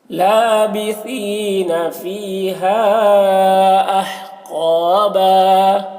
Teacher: قوف کو موٹا کر کے پڑھیں گے